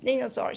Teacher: So the first syllable is the stressed one.